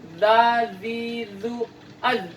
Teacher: ujung lidah bertemu dengan bagian dalam gigi